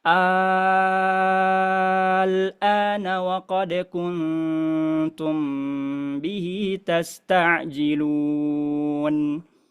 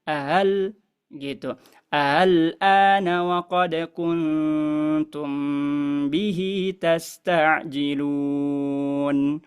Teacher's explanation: kita kalau bacanya dengan ibdal berarti kita baca pakai hukum mad lazim enam harakat